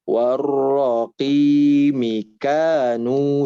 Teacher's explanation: Di kata warroqi, ro-nya tahan dulu, jangan tergesa-gesa. Kanunya juga panjangkan.